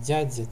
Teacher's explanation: Д и Т при смягчении переходят в фрикаты